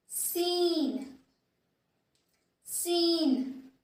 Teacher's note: Again, the difference is that these two letters are spelled through the airflow from our mouth, and in the letter N, we do the release of airflow through our nose.